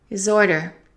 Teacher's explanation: Let's connect the D to the I because the H is eliminated. And let's connect the S to the O.